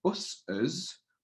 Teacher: I don't just need to add another S onto it. I can hear a us at the end of it instead, like a us phoneme there.